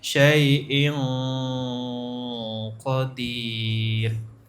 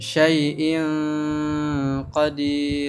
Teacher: kalau ditutup hidungnya berhenti suaranya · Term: Ikhfa qof